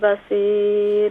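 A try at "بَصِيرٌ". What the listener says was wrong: बसीर, स्वाद मोटा है।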